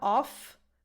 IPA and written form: ɔf (OFF)